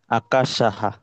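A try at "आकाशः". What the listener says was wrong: আকাশ। হ্যাঁ।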